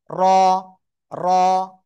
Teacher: র, মোটা আওয়াজে পড়তে হবে। সিম্পল বাংলায় যে র, ঠিক আছে, এ র মতোই, কিন্তু একটু মোটা আওয়াজে পড়তে হবে।